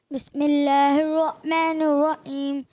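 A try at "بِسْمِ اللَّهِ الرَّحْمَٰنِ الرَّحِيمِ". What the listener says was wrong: آپ ہا کی ادائیگی کوشش کریں درست کریں. بسم اللہ الرحمن الرحیم.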